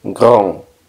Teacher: La N hace que la A suene nasal. Grand. Y la D no suena.